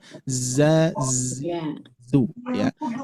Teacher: Ujung lidah yang membentuk huruf zai menempel di antara gusi gigi seri